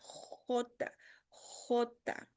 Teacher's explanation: J é difícil também, ela nasce no fundo da garganta.